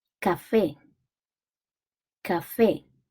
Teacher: café has a stress syllable at the end.